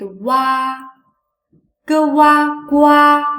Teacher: first pronounce the simple final u shortly and then smoothly shift to pronounce the simple final a this sound is close to what in worry however the chinese